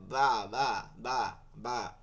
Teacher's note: বা, দুই ঠোঁটের ভিজা জায়গা হইতে বা উচ্চারিত হয়। ভিজা জায়গা হচ্ছে ভিতরের দিকে, দেখেন এই ভিতরটা লাগে গেছে, সামনেরটা কিন্তু লাগে নাই, সামনেরটা ফাঁকা আছে।